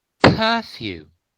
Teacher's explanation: It's voiceless. Yeah, p is voiceless. It's bilabial.